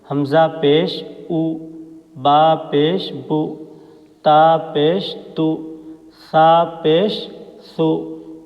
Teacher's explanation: تو ایسے اس طرح کے گول نشان کو ہم پیش کہتے ہیں، اور پیش کی آواز معروف ہوتی ہے، مجہول نہیں ہوتی، اور اسی طرح پیش کی آواز آگے کو جاتی ہے اور ہونٹ گول ہوتے ہیں